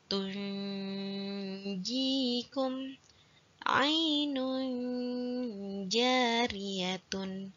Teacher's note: Jim adalah bacaan makharijul huruf di tengah lidah, nempel ke langit-langit atas. Jadi harus terdengarnya bukan di tenggorokan, tapi di tengah lidah itu.